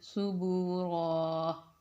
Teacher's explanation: را کو پر کر کے موٹی آواز کے ساتھ ہم نے اس کو ادا کرنا ہے